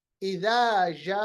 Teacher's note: लंबा करना है 3 अलिफ के बराबर। ये अब मद असली नहीं रही बल्कि इसको हम मद फरई कहेंगे।